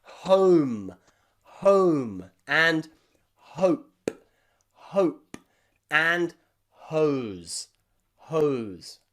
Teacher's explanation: your mouth has to move a lot to make this diphthong sound after the letter h